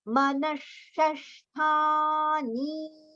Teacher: The visarga sound is sh, which we have to pronounce.